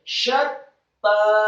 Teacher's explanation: syaknya dibaca tafkhim tebal fathah 1 harokat, kemudian setelahnya ditekankan ke huruf ta yang tasydid, syatta, dan taknya setelah ditasydidkan fathah 2 harokat karena setelah huruf ta ada seperti huruf yang sama dengan huruf ya sukun meskipun tidak ada titik 2 seperti ya sukunnya.